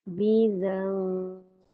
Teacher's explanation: Bila lepas za, bibir jangan rapat sangat. Dibaca secara diikhfakan.